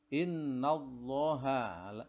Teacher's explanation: ini adalah dibaca panjang karena sebelum huruf lafzul jalalah ini adalah berupa huruf fathah. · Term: tafkhim